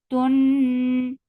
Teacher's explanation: Noon will get sifa of gunna. This gunna is akmal.